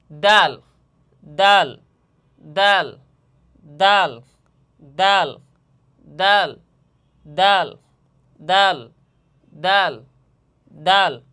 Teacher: জিহ্বার আগা সামনের উপরের দুই দাঁতের গোড়া এবং সামান্য তালুর সঙ্গে লাগাইয়া দাল।